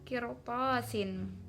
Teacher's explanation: ada ra sukun kemudian sebelumnya kasroh maka disebut ra tarkik, dibaca tipis. Tasnya, toknya mad tabi'i, kemudian sinnya itu kasroh tanwin bertemu fa maka disebut ikhfa hakiki lagi.